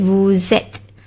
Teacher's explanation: Sebab tu ada bunyi Z dekat situ. Okay, bila huruf S bertemu dengan huruf vokal pada perkataan seterusnya tu, kita bunyikan bunyi Z, huruf Z.